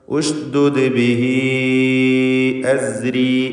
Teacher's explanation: ബിഹി ഇതിലുള്ള ദീർഘം മദ്ദുസ്സിലത്തിൽ കുബ്ര എന്നതാണ്. മദ് മുൻഫസിലിൻ്റെ ഹുക്മാണ്. 4-5 ഹറക്കത്തിൻ്റെ അളവിൽ ദീർഘിപ്പിക്കുക.